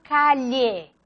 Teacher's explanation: representa la lateral palatal sonora